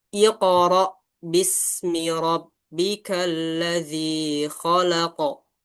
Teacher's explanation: Kita lihat ada qalqalah dua. Dia di tengah dan di akhir ayat harus dia dipantulkan.